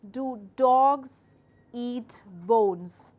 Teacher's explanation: a regular question goes up compared with a statement, but drops back down at the end.